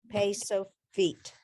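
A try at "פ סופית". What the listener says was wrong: Okay, so without the dot, it's a PH.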